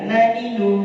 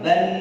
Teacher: Tetap di ujung lidah naninu, tapi kalau disukun ban ada makhraj tambahan lain yaitu makhraj khaysum namanya. Makhraj dengung.